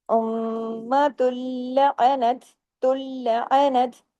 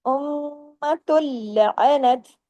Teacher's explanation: ता दो पेश तुन की जो तनवीन है ये खत्म हो गई क्योंकि आगे लाम पर तशदीद आ गई जब अगले हर्फ पर तशदीद आ जाती है तो पीछे जो